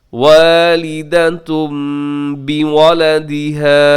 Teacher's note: ला तुज़ार्र वालिदतुम बिवलदिहा, वालिदतुन पे तनवीन है और उसके बाद बा है, यहाँ पे आप करेंगे जी इक़लाब, और तनवीन को आप मीम के साथ बदल के पढ़ेंगे।